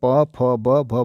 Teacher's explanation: ओष्ठ से उच्चारित होने वाले प, फ, ब, भ, म हैं।